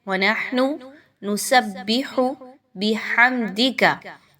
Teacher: آپ نے ہا کو اچھے سے نرمی کے ساتھ حلق کے درمیانی حصے سے نکالیے